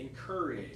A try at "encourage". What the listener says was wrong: It's that R sound again. I heard a little bit of a different sound. I heard koi or something.